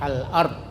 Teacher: Tapi kalau tidak ada huruf sebelumnya yang dibaca maka alifnya dibaca fathah, al-ard. Ya, jadi ini huruf kamaria.